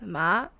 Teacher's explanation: a rising tone from low to high just like a pitch in a question with a rising diagonal to indicate it so you would say · So, for example, ma, which is like mom, and the second one is a rising tone from low to high, just like a pitch in a question,